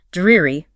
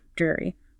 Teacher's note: Focus on that long E sound in the first syllable.